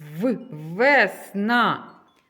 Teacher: Перший звук в цьому слові в. Він приголосний, твердий.